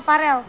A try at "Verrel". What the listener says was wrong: Veryl. Non, tulisannya kan V-E, bukan V-A. Veryl. Orang kan Veryl.